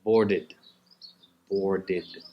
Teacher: Now, when we have a word which ends with a T or D, board, for example, to board an aircraft, it ends with a D sound. When we put the ed at the end, it's pronounced id, id, or ed, something in between.